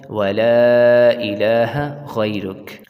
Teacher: غین کو پر کریں گے ہم، اور لا کے اوپر مدے سے لمبا کریں گے ہم